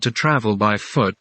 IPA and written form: tu ˈtrævl baɪ fʊt (To travel by foot)